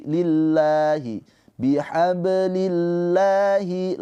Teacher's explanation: Lafaz Allah di sini dibaca dengan tarkik tipis pakai a karena didahului dengan kasrah · Lafaz Allahnya dibaca dengan panjang dua harakat. Ini pemanjangnya fathah berdiri.